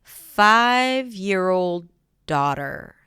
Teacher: So now daughter is the keyword. 5 is the secondary stress.